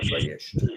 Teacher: now we're left with a consonant cluster, vayisht, and the vowel simply colors to vayisht, and it doesn't break the consonant cluster